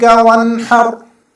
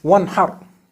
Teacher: Noon sakin is followed by the letter ha. So we have to do idhar on this noon sakin by reading it clearly and briefly, without exaggerating the gunnah in it.